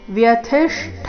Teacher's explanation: ಮುಂದೆ ಅರ್ಧ ಮೂರ್ಧನ್ಯ ಶ ಪೂರ್ತಿ ಠ ಮಹಾಪ್ರಾಣ ದೀರ್ಘ · ವ್ಯಥಿಷ್ಠ ನಲ್ಲಿ ಥಿ ರಸ್ವ ಮಹಾಪ್ರಾಣ ಅದರ ಮೇಲೆ ಆಘಾತ